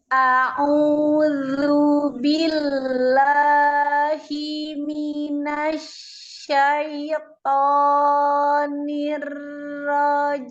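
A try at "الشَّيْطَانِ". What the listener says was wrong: Sama dengan tai. Minasyaiton. Nah, pokoknya kan nah, jangan disamain dengan ro tadi yang tonya minasyaiton sambil senyum kan nggak tebal dia. Coba dibedain. Minasyaiton, ya kan? Tapi minasyaiton.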